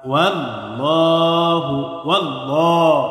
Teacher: আল্লাহর সাথে লামের পূর্বে জবর অথবা পেশ আসলে আল্লাহর সাথে লামকে পুর করে, অর্থাৎ মোটা করে পড়তে হয়